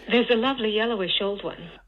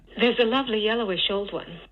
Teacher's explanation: And you can see there's kind of a negatively sloping line going down towards the end of the utterance. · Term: downstepping